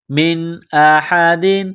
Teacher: ہے، بضارین، را کو باریک کرنا ہے، بی ہی، من احد، نون ساکن کے بعد حمزہ ہے، حروف حلقی ہے، تو نون ساکن پر غنہ نہیں کریں گے